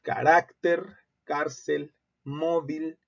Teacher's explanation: en todos los casos su sílaba tónica es la penúltima es decir antes de la última y como no terminan ni · La sílaba tónica es la penúltima y se tildan cuando su terminación es diferente de N, S o vocal. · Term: palabras graves